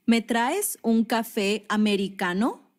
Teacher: notice how it's said with a rising intonation at the end of the sentence